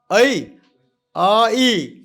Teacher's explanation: और ऐ अ ई तो शुरू होता है अ खत्म होता है ई अ ई। तो दो अक्षर है। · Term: जुक्त अक्षर